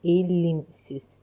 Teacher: Burada l ilə m-nın arasına i sayıtı əlavə olunacaq. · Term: səs artımı